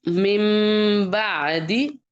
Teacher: نون ساکن کے بعد با آ گیا تو اب اس کو ہم اقلاب بنائیں گے تو یہاں پہ نون کی آواز کو میم میں ہم نے چھپا دینا ہے. یعنی اور قرآن پاک پہ نا چھوٹا سا میم بھی لکھا ہوتا ہے اس کے بعد ساتھ نا، تو اس لیے سمجھ آ جاتی ہے قرآن پاک کو.